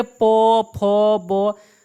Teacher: बिना ओठ सटे आप इसको नहीं बोल सकते हैं, इसलिए इसे कहा जाता है ओठ ध्वनिया